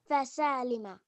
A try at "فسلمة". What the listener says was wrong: فسلمة. فسلمة. You see no alif? This is no alif. فسلمة is no alif. فسالمة. That's an alif. You understand your mistake? Don't add alifs, please.